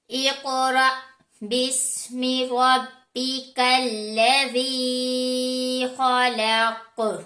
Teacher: रा हरूफ मुस्तालिया में से नहीं है, लेकिन रा के ऊपर जबर आ जाने की वजह से रा को हम मोटा करते हैं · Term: रा को मोटा